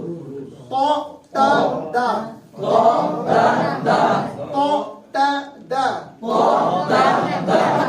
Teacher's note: زبان کی نوک کو، یہ 3 حروف ہیں، زبان کی نوک کو سامنے کے دانتوں کے پیچھے لگا کے ادا کرتے ہیں